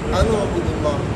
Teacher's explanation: ये उअबुद का हमज़ा का जो पेश है ये नकल करके नून साकिन को दे देते हैं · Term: نقل حرکت